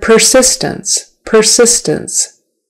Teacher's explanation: persistence accent is on the second syllable but make sure that first syllable per is an ER per per not per systems or something else but persistence calling